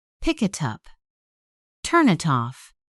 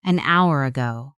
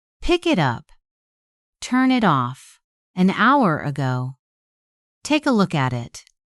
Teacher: Turn it off can sound like turn it off. The final sound of one word moves directly into the next word. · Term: linking